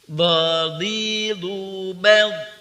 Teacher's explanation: Do, jangan sampai monyong ya, jangan monyong. Do tidak monyong. Ketika du baru monyong.